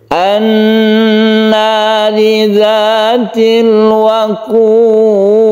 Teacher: Karena al bertemu dengan nun, maka dia itu ditasydidkan ke nun sehingga membacanya itu gunnah atau berdengung